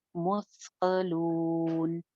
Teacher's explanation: मुस्ता बगैर सीटी के